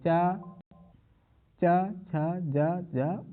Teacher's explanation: इनका उच्चारण जो होता है वो किससे होता है? वो तालु से होता है